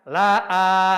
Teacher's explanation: Nah, sekarang si hamzah si alifnya ini dipanjangkan.